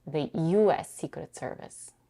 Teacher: Here, the primary stress is on U